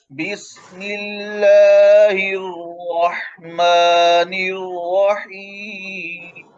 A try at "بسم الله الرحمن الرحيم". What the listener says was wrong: आवाज कट रही है रहीम में। बिस्मिल्लाहिर्रहमानिर्रहीम।